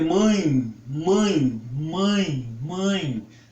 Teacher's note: Os ditongos nasais são sempre fechados, enquanto os orais podem ser abertos, como em pai, céu, rói, ideia, ou fechados, como meu, doido e veia. Nos ditongos nasais, são nasais a vogal e a semivogal